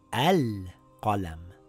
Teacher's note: But if I read this word on its own, I have to place a vowel on the Hamzatul Wasl.